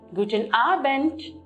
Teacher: Here too, when you look at the word Abend, the word ends with D, but we do not take the D pronunciation, but we end it as T